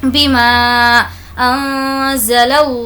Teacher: यहाँ पर हमें नून की आवाज़ को नाक में छुपाना है, वो क्योंकि नून साकिन के बाद ज़ा है, और ज़ा हुर्फ़ इख़्फ़ा के 15 लेटर्स में से है।